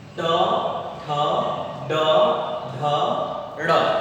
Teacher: ट वर्ग को कहते हैं मूर्धन्य वर्ण, मूर्धा। हमारी जीभ का आगे वाला हिस्सा थोड़ा सा मुड़ करके टक्कर मारता है, तब जाकर के हम इन वर्णों का उच्चारण कर पाते हैं। ट, ठ, ड, ढ, ड़।